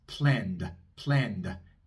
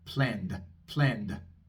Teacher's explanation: la D es un sonido sonoro, así que vamos a pronunciar una pequeña A al final. Como con el verbo plan, de planear. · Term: D sonora